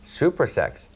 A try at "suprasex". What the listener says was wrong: Supra. Not super. Supra.